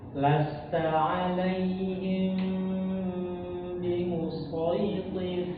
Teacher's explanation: Nah, ini namanya ikhfa syafawi. Jadi ikhfa syafawi ini dia bibir kita itu tidak menempel dengan tertutup, tapi dia menempel, tetapi menempelnya itu seperti bergetar. Ya, kadar getarnya itu sangat halus sekali begitu.